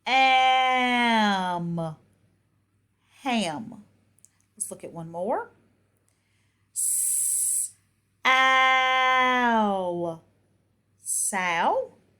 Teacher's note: So in these words, you're going to have a continuous, and then a stop sound.